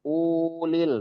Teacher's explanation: Di ulil kuwati itu di u-nya itu nggak dipanjangkan itu.